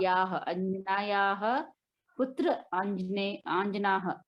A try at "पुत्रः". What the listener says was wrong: पुत्रः, पुत्र अकेला नहीं है।